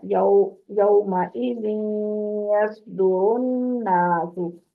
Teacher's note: गुन्ना जो है वो 2 हरकत कितनी आवाज नाक में रोक के फिर पूरा होता है, 2 हरकत से कम नहीं होता